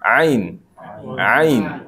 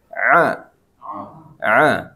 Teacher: ain jangan jadi a. Ini beda tempat keluarnya beda.